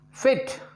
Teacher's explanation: दोनों जबड़े के बीच में कितना खुलेगा, नैरो टू मीडियम.